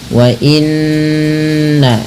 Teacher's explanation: menahan bunyi suara nnya atau bunyi suara nunnya sepanjang dua harakat. Wa inna baru dilepas ya. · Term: gunah, gunnah